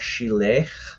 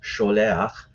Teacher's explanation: the A-class vowel helps the speaker transition the sound toward the back of the throat. So it makes it easier to say that sound.